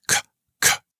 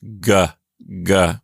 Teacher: if I vibrate my vocal cords while I say a c it becomes g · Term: voiced